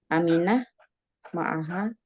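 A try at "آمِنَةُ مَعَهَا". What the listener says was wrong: Ya, dibaca semua harokatnya, Umi.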